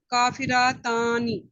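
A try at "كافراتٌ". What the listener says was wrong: जी, अब ये रा पूरा पता चलना चाहिए, मुंह खोल के बोलना है, रातुन।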